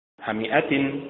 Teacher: حمئة متعل بالنبر على حركة الحاء